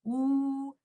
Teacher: In case of waw mad, oo. It comes with the vibration of the vocal cord plus the circling of the two lips.